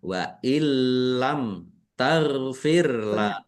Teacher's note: nun sukunnya tidak dibaca tetapi tidak mendengung ditandai Lamnya ada tasdidnya. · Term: idgham bila ghunah